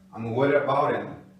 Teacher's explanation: O D entre duas vogais, som de R.